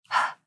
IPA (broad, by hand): h